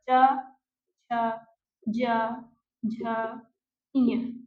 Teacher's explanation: पूरा च वर्ग। च छ, ज झ, ञ ये किससे बोले जाएंगे? तो तालु से।